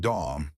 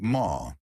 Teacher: British people don't pronounce the letter R at the end of words. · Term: The R disappears